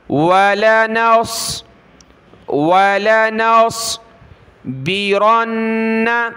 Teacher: وقد هدانا سبلنا ولنصبرن، واو زبر وا، لام زبر لا، ولا، نون کو صاد کے ساتھ ملایا، نص، صاد کو موٹا کیا ، ولنصبرن، با زیر بی، را کو نون کے ساتھ ملا